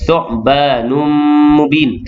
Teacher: Idgham ma'al gunnah, memasukkan tanwin ke dalam mim yang selepasnya berserta dengung dua harakat.